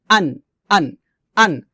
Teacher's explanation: হামজাটা আমরা হল শুরু থেকে সাধারণভাবে নরমাল করে উচ্চারণ করব